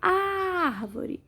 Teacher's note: Sílaba mais forte é o ar, som aberto, acento agudo.